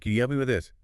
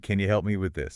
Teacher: can you, reduces to can ya and help me.